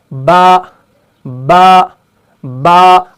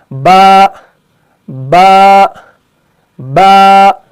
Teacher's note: तो जैसे हम पढ़ते हैं बा बा बा, आप इस हरफ को पढ़ें और आप ये महसूस करेंगे कि ऊपर वाले होंठ का जो गीला वाला हिस्सा है ये निचले वाले होंठ के गीले हिस्से से चिपक रहा है, मिल रहा है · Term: हरफ बा